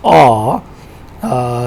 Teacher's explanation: So this vowel, which is primary cardinal vowel number 5, is described as back. It is described also as rounded, because if you pronounce a, your lips are to some extent rounded. So it is rounded, back, and it is low as well.